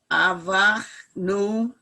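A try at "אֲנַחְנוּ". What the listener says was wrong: That's a nun, the second letter.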